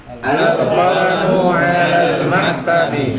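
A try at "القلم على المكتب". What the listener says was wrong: Ahsantum.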